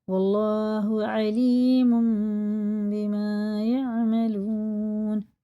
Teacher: ادغام میم میں غنہ کر کے پڑھنا